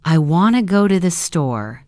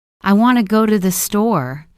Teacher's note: The strong beats are on want and store.